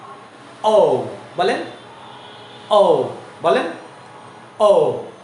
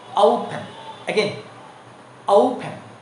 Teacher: মুখটাকে বড় করে ছোট করবেন, রাউন্ড করে।